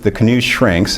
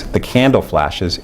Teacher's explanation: You get stress on the second syllable for the prime and on the first for the target. And what we find is you get lengthening for both of these, but you get way more lengthening when there's metrical and phonological overlap. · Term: metrical stress